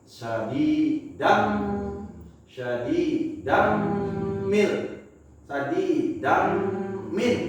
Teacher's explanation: Kita harus lebur ke huruf ma yang ada di depannya. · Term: idgham